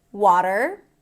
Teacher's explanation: In American English, open a sound, flap t, and an r. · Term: American pronunciation